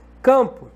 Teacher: O problema é que esse M está junto com a vogal A, formando um dígrafo vocálico. Esse M não é uma consoante nesse contexto, porque está nasalizando a vogal. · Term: marca de nasalização